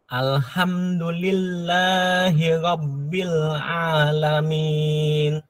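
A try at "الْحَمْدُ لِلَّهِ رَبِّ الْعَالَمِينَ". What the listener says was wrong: Lillahnya kepanjangan. Ingat dua harokat dan satu ketukan. Alhamdulillahi Rabbil Alamin.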